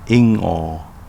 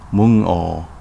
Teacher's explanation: Words that end with an N sound will become a o sound.